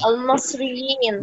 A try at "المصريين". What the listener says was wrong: لا المصريين، كسر الميم، الميم. المصري. يبقى جمع مذكر.